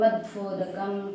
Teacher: वकारो दंतोष्ठ्यो ऐसे बोला जाता है